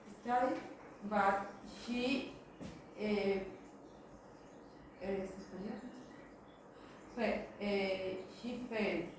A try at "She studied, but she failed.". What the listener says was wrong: Failed. We don't pronounce this A. She failed.